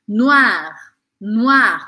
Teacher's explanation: lembra que ó com i a gente fala o a e o r arranhadinho